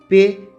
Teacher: इस आवाज की अदायगी में बाहर आती हवा को दोनों होठों के दरमियान रोका जाता है और इसी वजह से इसे मुसम्मत कहा जाता है जबकि इसके